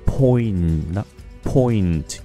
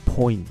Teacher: Nó vẫn có chữ N nhưng mà nó mờ lắm.